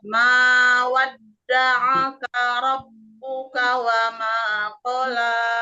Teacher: di rab itu ee tahan dulu kira-kira satu harakat ya ditasjidkan dulu tahan dulu sekitar satu harakat